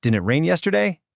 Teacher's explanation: that final T in the word it becomes that glottle stop we just learned about. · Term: glottal stop